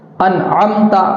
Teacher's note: انعمت کا جو عین ہے اس کو حلق سے نکالنا ہے